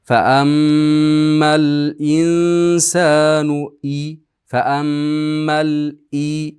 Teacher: faam mimni ushlab turamiz mimda g'unna bor. G'unnasi eng komil.